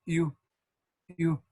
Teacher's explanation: Muchos lo manejan con el diptongo IU, como U, U. Es como decir I, pero con los labios redondeados.